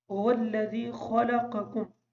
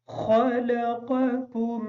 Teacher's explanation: پہلا قاف موٹا پڑھیں گے، دوسرا کاف باریک پڑھیں گے